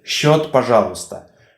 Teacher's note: So in Russian language we pronounce it as sh, the same sound as for letter sha.